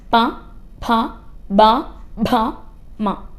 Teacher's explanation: ചുണ്ടിന്റെ സഹായത്താലാണ് pronounce ചെയ്യുന്നത് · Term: ഓഷ്ട്യം